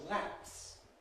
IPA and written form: læps (lapse)